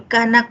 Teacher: la a es un fonema vocal abierta central